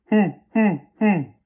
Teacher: It's kind of like an oo and an o mixed together. Okay? We want the throat to feel hoo, as if you're going to hoot like an owl. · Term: Italian small oo